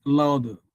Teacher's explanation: So louder actually it is the loud that gets the emphasis not the D.